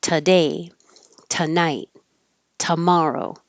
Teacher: So the ta is short and the stressed a is longer. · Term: schwa